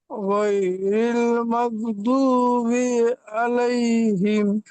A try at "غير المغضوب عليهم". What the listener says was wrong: مغضوب এর মধ্যে টান হবে না غير المغضوب عليهم غير المغضوب عليهم غير المغضوب عليهم ولا الضالين